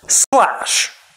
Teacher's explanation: there wasn't actually any sound between the s and the l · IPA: [s_læʃ]